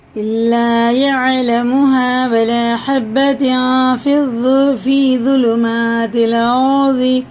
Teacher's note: ساکن سے پہلے زیر کھڑے زیر کی طرح کھینچیں گے اور تنوین کے بعد فارا، یہ اخفاء میں سے ہے، یعنی ایک الف کے برابر ناک میں لے کر چھپا کر اس کو پڑھنا، اس کی نون کی آواز کو